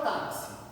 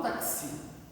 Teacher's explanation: A sílaba tônica dela é o tá.